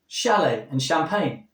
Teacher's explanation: Well, the ch represents the sh because modern French words that begin with a ch have a shh sound